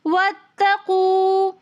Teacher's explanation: واتقوا میں واو مدہ ہونے کی وجہ سے ہم 1 الف کی مقدار کھینچ کر پڑھیں گے